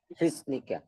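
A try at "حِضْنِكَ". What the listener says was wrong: হিসনুন না, দদ, শুধু দদ হবে, সদের জায়গায় দদ হবে।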